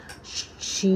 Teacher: ज़बान के दरमियानी हिस्से को तालू से चिमटा कर शीन अदा होता है